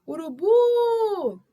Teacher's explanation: Urubu, se você chamar também, o bu é a sílaba tônica.